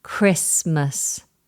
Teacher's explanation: Notice how I've dropped the T.